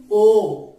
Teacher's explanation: ओ और औ ये दोनों जो वर्ण हैं वो कंठ और होठों से उच्चारित होते हैं। बोल के देखिए ओ, अर्थात होठ भी सुपड़ रहे हैं और गले की भी आवश्यकता पड़ रही है। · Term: कंठोष्ठ